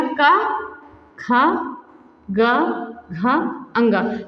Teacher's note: तो तीसरा चौथा पांचवा ये तीनों सघोष होगा, पहला दूसरा ये अघोष होता है।